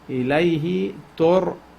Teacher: ra should be pronounced heavy with tafkhim